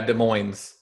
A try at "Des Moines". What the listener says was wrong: Des Moines. I don't think we pronounced the S with Des Moines. You pronounced the S. I don't think you're supposed to pronounce that S. I'm not 100% sure.